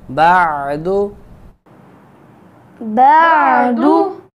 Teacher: یہاں پہ عین ساکن ہے. جب ہم عین کو ادا کریں گے تو یہ وسط حلق سے نہایت لطافت کے ساتھ اس کو ہم ادا کریں گے. عین کو ادا کرنے کے وقت گلے کو نہیں گونٹنا چاہیے بلکہ نہایت لطافت کے ساتھ اس کو ادا کریں.